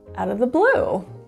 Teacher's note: blue is elongated sung with a nice high and low wave and it's a bit louder